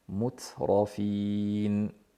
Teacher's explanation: Mut hamsini bildirib keyin ro'ga o'tamiz.